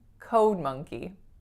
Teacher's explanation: a programmer so for a code monkey it's two words but listen and tell me which word is stronger code monkey the first